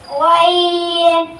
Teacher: حلق کے اوپر والے حصے سے ادا ہوتا ہے